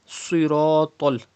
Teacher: Siratal, Sad, Ra and Ta. All of these letters will be pronounced in a thick tone, like this siratul.